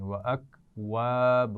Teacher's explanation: وَأَكْوَابٌ واو کے مخرج کا خیال رکھنا ہے، دانت نہیں لگانی. وَأَكْوَابٌ اور با کے اوپر تنوین ہے اور اس کے بعد میم ہے تو یہاں غنہ ہوگا.